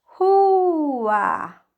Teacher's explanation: A gente abriu a boca duas vezes. Então, o A fica separado do U. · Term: hiato